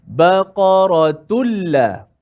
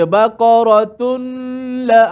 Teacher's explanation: Maka kita baca secara idgham nun ataupun tanwin masuk dalam lam secara total